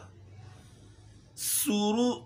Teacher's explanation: सीन में सीटी की आवाज़ निकालनी है।